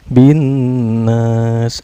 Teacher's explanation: alif lamnya tidak dibaca melainkan memasukkan dari huruf ba ke huruf nun